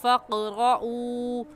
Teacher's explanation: ऊ को हम इस वजह से खींचेंगे क्योंकि वाव साकिन से पहले पेश आ गया तो वाव मद्दा, और वाव मद्दा को एक अलिफ के बराबर खींच कर पढ़ते हैं